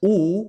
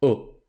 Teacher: Luego tenemos otra U que también está un poquito más hacia el centro del trapecio, entonces no es U como en español, sino U